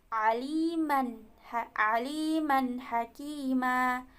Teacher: Jadi tanwin bertemu dengan ha, di situ jelas bunyinya. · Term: izhar halqi